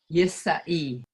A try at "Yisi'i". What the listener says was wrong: Yisi'i. Make sure that I is in there. Yisi'i.